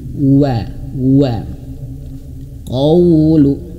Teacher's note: Setiap huruf wau diusahakan manyun karena makhraj huruf wau itu atau letak suar huruf wau itu harus moncong bibirnya atau manyun bibirnya